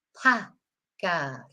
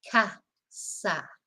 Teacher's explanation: A in Spanish, it's a short A, like in how we pronounce it in the north of England